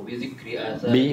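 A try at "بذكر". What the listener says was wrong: Bi dzikri. Tidak ada wawnya.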